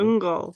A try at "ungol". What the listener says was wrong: Shorten the un and just go ungol. Like the is in the back of your throat. Ungol. ungol.